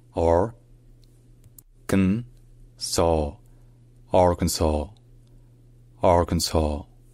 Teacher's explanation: comme vous l'entendez encore une fois le S à la fin n'est pas prononcé